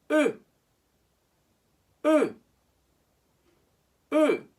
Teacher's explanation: this letter is said as if you wanted to say O, but then say E instead. So it's with rounded lips.